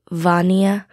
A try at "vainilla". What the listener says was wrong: Well, there's actually an extra I in the Spanish version. It's like vainilla, sort of like that.